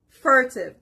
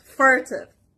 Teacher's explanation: The stress is on the first part, furtive.